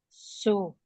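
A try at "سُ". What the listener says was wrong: Tuh. Itu masih huruf short, dia jangan digesek. Su, jangan begitu. Su, bukan begitu. Tu.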